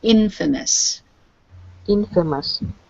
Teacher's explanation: remember to really stress the in on this word